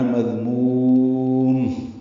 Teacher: دوسرے میم پہ وقفاً اظہار ہے، دونوں پیشیں ساکن ہو جائیں گی